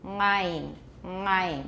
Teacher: he did have a nasal a uvular nasal tap